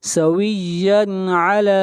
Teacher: لام کو کھینچ کر پڑھیں گے ایک الف کے برابر، لام کے اوپر کھڑی زبر ہے